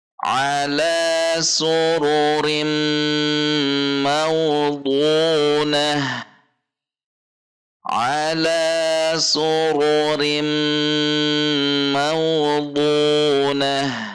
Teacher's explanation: Selanjutnya ala dua harokat sururim idgham bi gunnah ditahan mau tidak mau tetapi maudhu namanya mau itu adalah layin maudhu dengan isti'la tidak du tapi du dengan menegangkan pangkal lidah natin menjadi nah.